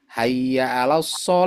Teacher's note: Udah itu aja. H-nya enggak terdengar. Seharusnya harus jelas.